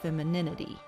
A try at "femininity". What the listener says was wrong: Well, that's because you say your E's like your I's, so you say femininity.